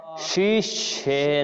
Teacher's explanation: তালব্যস তালুতে উচ্চারণে জিহ্বা তালুতে লেগেছে মূর্ধন্যস জিহ্বা মূর্ধাতে লেগেছে মূর্ধার একটু উপরে হলো তালু এজন্য আপনারা উচ্চারণ করবেন যখন তখনই